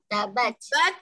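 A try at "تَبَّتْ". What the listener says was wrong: Saya tak dengar angin dia. Tabat.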